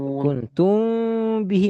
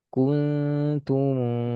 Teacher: kuntum bihi mim ketemu ba ikhfa syafawi dengung dua harakat kasih celah sama seperti iqlab